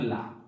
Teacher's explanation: ऐसा व्यंजन जिसके उच्चारण में जीभ के अगल बगल से गर्म वायु निकले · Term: पार्श्विक व्यंजन